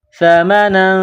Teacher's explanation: سا زبان کا سرہ تھوڑا سا باہر نکالیں گے، سا کو نرم کریں گے، سا زبر سا، میم زبر ما، سما، نون دو زبر نن، سمن، تنوین کے بعد قاف ہے، حروف اخفا ہے، تو یہاں آواز ناک میں چھپائیں گے اور اس ناک میں آواز چھپانے کو اخفا کہتے ہیں۔